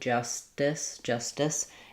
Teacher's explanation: It sounds a little bit um unaspirated, almost like a D. Justice. So, you can think about the st going together. · I don't use an aspirated T here in an ST blend, justice. It sounds a little bit unaspirated, almost like a D, justice.